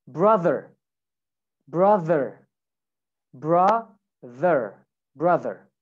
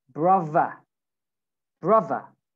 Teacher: But you can replace this TH sound with V. · In some accents, like in London accents, in northern accents, okay, northern British accents, you replace the TH with F and with V.